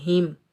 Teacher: इस हा को हम सीने से अदा करेंगे। हा के नीचे ज़ेर, हा को हम मीम साकिन के साथ मिलाएंगे और बगैर खींचे पढ़ेंगे हिम।